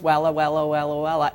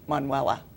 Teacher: Sort of an unstressed, stressed, unstressed syllable.